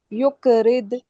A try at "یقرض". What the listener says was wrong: جی آپ قاف کا قلقلہ ہو رہا ہے لیکن قاف کا مخرج آپ کا صحیح یق کی طرف چلا جا رہا ہے. قاف جیسے ذق پہ آپ نے بہت اچھا نکالا تھا ٹھیک ہے اور قد پہ بھی.